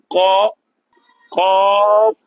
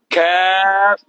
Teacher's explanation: Seterusnya qaf ni di mana sahabat-sahabat Quran makhrajnya qaf. Pangkal lidah bertemu dengan langit lembut sahaja.